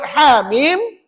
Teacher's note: 8 harakat aja. Mana tahu 8? 2 campur 6. 2 untuk ha, 6 untuk mim.